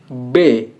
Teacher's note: bunyi B yang mendapat hambatan pada kedua bibir